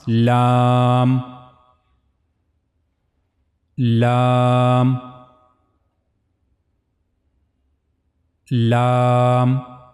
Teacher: tip of the tongue will connect to gum of the two top front teeth. This is the origin of letter lamb.